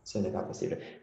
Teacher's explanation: make sure to not pronounce the S at the end of pas in this case. So it will be ce n'est pas possible.